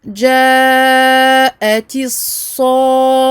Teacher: On n'oublie pas d'appuyer, de doubler le sod et pareil d'appuyer sur le kha et donc de le doubler également.